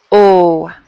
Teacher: It's not just straight up O. It's definitely, my mouth is very tight. My lips are really round.